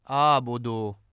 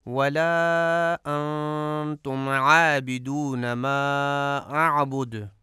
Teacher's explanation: ما اعبد میں بھی عین کو درست نہیں پڑھا جاتا اور حمزہ پڑھا جاتا ہے آبدو، اور یہ غلط ہے۔